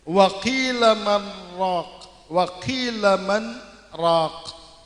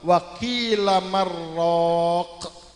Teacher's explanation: kalau sumpama tidak disaktahkan maka akan terjadi idgham antara nun mati ketemu dengan ra. Sehingga menjadi kalla bal apa wa qila marraq.